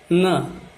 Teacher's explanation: जब जिह्वा लग करके ये अक्षर निकलता है नाक से, तो उसको दंत नासिक्य बोलते हैं